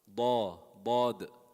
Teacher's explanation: Makhraj is the side of the tongue. Very difficult makhraj. And it's also heavy. So it's not Da, it's Da.